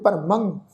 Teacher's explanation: ਮੰਮੇ ਉੱਤੇ ਟਿੱਪੀ ਦੀ ਮਾਤਰਾ ਨਾਸਕੀ ਉਚਾਰਨ ਕਰਾਂਗੇ